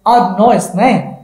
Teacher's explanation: আসলে হিজ এর আরেকটা উচ্চারণ আছে ইজ, যখন এটার উইক ফর্ম হয়